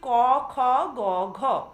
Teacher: জিহ্বা মূলের পিছন দিক স্ফীত হয়ে কোমল তালুর প্রান্ত তথা আলজিভের কাছাকাছি শ্বাসবায়ু নির্গমনে বাধা দেওয়ার কারণে যে ব্যঞ্জন ধ্বনি উচ্চারিত হয় সেগুলিকে কণ্ঠ ব্যঞ্জন বা জিহ্বামূলীয় ব্যঞ্জন বলে